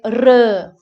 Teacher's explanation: But in GIE, R is, regardless of the position of R, it is pronounced like a roll or a tap